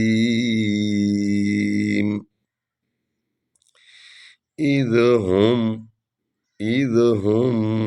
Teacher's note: از ہم ہا کو ہم نے حلق سے نکالا ہے۔